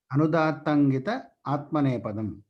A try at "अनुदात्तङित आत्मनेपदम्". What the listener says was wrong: అంత గ్యాప్ తీసుకోవద్దు. అనుదాత్తంగిత ఆత్మనేపదం సంధి ఉన్నది ఇక్కడ కనుక అనుదాత్తంగిత వెళ్తేసి ఆత్మనేపదం తర్వాత అనకూడదు. అనుదాత్తంగిత ఆత్మనేపదం అంటే సంహిత ఉన్నది ఇక్కడ. అనుదాత్తంగిత ఆత్మనేపదం. సంధి విచ్ఛేదం చేస్తే చేయండి. అనుదాత్తంగిత ఆత్మనేపదం అనే 2 పదముల సూత్రం.